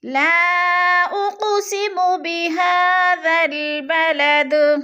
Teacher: درمیان میں الف زائد ہے، ذال کو لام کے ساتھ ملا کر پڑھیں گے، اور بلد پہ پھر قلقلہ کرنا ہے، جیسے وقف کی صورت میں دال کے اوپر بلد قلقلہ کر کے پڑھیں گے۔